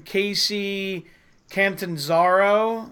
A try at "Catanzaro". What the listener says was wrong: Catanzaro. Yeah, I think you have the N in the wrong place, but yeah, I think it's.